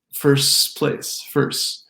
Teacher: All of these stretch the S.